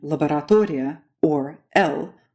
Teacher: The hard L, as in laboratoria, or L, moves up even further in the back, forming a throaty kind of swallowed O. So English has L, Russian has L.